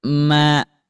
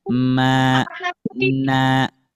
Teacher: Dengungannya itu di sebelum kita memanjangkan hurufnya. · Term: gunnah anqos